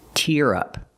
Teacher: We use the ear sound like hear and beer.